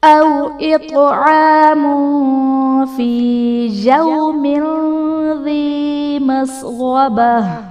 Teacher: أَوْ إِطْعَامٌ فِي يَوْمٍ ذِي مَسْغَبَةٍ، أَوْ إِطْعَامٌ میم پر دو پیش کی تنوین، تنوین کے بعد حروف اخفاء میں سے فا ہے تو یہاں پر تنوین میں ہم غنہ کر کے پڑھیں گے، یعنی یہاں پر اخفاء کا قاعدہ ہوگا۔ فی میں یا ساکن سے پہلے زیر ہے، یا مدہ کا قاعدہ ہے۔